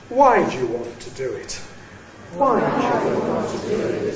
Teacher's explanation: Notice the low-level tail. Must have a low-level tail after a fall.